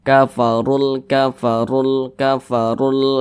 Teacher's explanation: Kemudian di sini huruf ra dibaca tebal, dibaca tafkhim karena dia memiliki tanda baca dhammah nih. Nah, maka ketika kita mengucapkannya itu pangkal lisan kita itu naik terangkat ke atas, ditebalkan. Kafarul hayatud dunya, begitu ditebalkan.